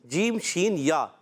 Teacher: اور شین کا مخرج بتا دیتے ہیں، وسط زبان وسط تالو، زبان کا درمیان کا حصہ اور تالو کے درمیان کے حصے سے